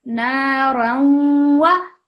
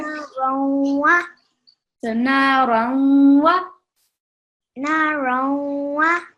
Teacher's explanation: when we have a tanween or a noon sakin, and after it we have the waw with the shadda, we're going to pause a little bit for 2 seconds and produce the nasal sound